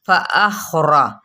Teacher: खा को पुर पढ़ेंगे, रा को भी पुर पढ़ेंगे